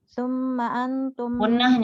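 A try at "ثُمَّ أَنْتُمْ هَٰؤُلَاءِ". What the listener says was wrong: gunnahnya. Gunnah kan udah belajar gunnah kita. Ini ikhfa, di sini ikhfa.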